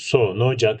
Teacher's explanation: ulamada ünsüzle biten bir kelime daha sonra ünlüyle başlayan bir sözcüğe bağlanarak okunuyor. Yani iki kelimeyi birbirine tabiri caizse zincirleme şeklinde uluyoruz. · İki kelimede birinci kelime ünsüzle, ikinci kelime ünlüyle başladı. Biz iki kelimeyi birleştiriyoruz.